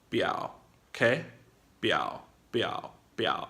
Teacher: If you can't quite hit the tones, know that the third tone is really short.